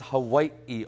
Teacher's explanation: with a more pronounced V sound the word is Hawaii